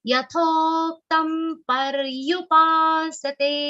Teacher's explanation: Tho is a long sound and has a subtle aghat of ka.